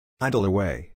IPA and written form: ˈaɪdl əˈweɪ (idle away)